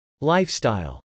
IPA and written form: lˈaɪfst.aɪl (lifestyle)